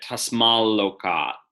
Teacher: before L, T assimilates to L